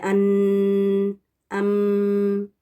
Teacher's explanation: یہ نون کی آواز یا میم کی آواز کو لمبا کر کے پڑھنا 2 کاؤنٹس کے برابر · تو جب یہ مخرج یہاں کا بند ہو جاتا ہے تو پھر یہ آواز اس کی نون اور میم کی پیچھے ٹریول کر کے یہاں سے نکلتی ہے، ناک کے بانسے سے، خیشوم سے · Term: غنہ